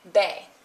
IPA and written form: be- (be-)